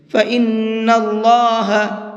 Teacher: نون کے اندر غنہ کریں گے اور اللہ کے لام کو منہ بھر کے پڑھیں گے